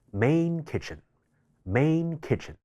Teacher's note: main▁kitchen▁快速連讀嘅時候音會受到緊接嘅單詞首▁k▁呢一個軟腭音影響，音會讀成呢一個後鼻音